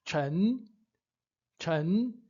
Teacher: Eu não estou pronunciando Chang, eu estou pronunciando Chen, né? Levando mais aí para o E, né?